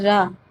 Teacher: र बोलते समय हमारी जो जी्हा होती है वह मुड़ जाती है बेलन के जैसे र इस प्रकार से यह प्रक्पित व्यंजन और कंपन भी होता है।